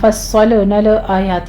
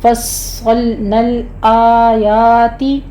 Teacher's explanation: لام ساکن ہیں، ان کے اوپر جھٹکا نہیں دینا، اس کے اوپر قلقلہ نہیں کہنا